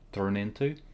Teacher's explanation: turned and into are linked making it sound like turn into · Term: linking